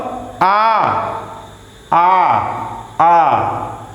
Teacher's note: उसी तरह से ओ यह जो है पश्च अर्ध विपरीत स्वर है। और आ देखिए ओठ जो है ये खुल जाता है, वो पश्च विपरीत स्वर है